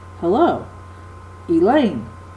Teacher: it has the first syllable as un accented and the second syllable is accented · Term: I Amic foot